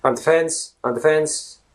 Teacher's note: in Ireland, people say they don't say the. There is no th, the typical th sound as in the used in Ireland.